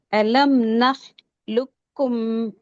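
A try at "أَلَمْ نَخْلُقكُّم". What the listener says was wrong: சத்து சத்துக்கு ஒரு டைம் கொடுங்க. லுக்கும் லுக்கும்னா சத்து உச்சரிக்கப்பட்டுள்ள. அலம் நஹ் லுக்கும் சின்ன கேப் தான்.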